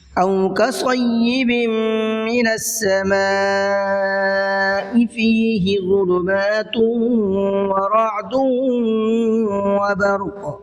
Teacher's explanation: کصیب، یہاں پر تنوین کے بعد میں میم آ رہا ہے جو ادغام کا قاعدہ ہے، تو یہاں پر تھوڑا سا غنہ کر کے پڑھیں گے۔ · سما پہ بڑا مد ہے، مد متصل کا قاعدہ ہے، اس لیے اس کو 4 سے 5 الف کے برابر کھینچ کے پڑھنا ہے۔